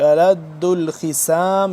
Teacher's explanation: خا موٹا صاد بھی موٹا سین سے جدا کر کے ألد الخصام نہیں پڑھیں گے، ألد الخصام کر کے پڑھیں گے،